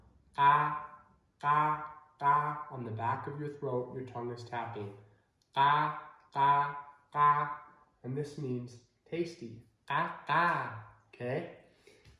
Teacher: the q is not in english okay it's way way back in your throat and it is not very aspirated